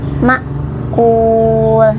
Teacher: ma itu ada hamzah sukun jadi ditekan